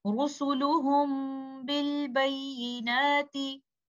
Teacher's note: In this example, Mim Sakina is in an ikhfa condition. We will hold this Ghunnah for some time, but that timing should be less than the timing of most complete Ghunnah.